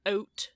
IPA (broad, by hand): ʌut